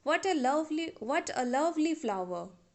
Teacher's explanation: we are giving stress on the syllable love here but we are using falling tone in this sentence